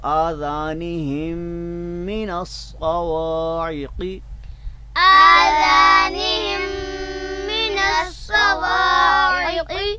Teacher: آذانہم من الصواعق، آذانهم من الصواعق آپ دیکھ رہے ہیں آذانہم کا جو آخری حرف ہے میم، اس میم کو آپ دیکھ رہے ہیں کہ اس کے اوپر جزم ہے، تو لہٰذا اس جزم والی میم کو ہم آگے مشدد میم میں ملا رہے ہیں، متحرک میم میں ملا رہے ہیں، اور یوں میم کا میم میں ادغام ہو گیا